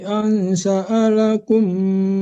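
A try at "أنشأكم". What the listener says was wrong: Nggak ada sya'alakum, mana lamnya nggak ada.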